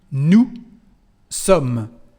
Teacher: as you can hear, we don't pronounce the letter S at the end of nous.